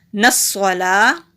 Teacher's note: نصلا، نون کو سواد کے ساتھ ملائیں گے، سواد حروف مستعلیہ بھی ہے اور اس کے اوپر تشدید بھی ہے، موٹا بھی کریں گے اور مضبوطی سے بھی پڑھیں گے۔ لام کے اوپر کھڑی زبر ہے، ایک الف کے برابر لمبا، تا کے اوپر زبر ہے، جلدی پڑھیں گے، واو کے اوپر زبر ہے، جلدی پڑھیں گے۔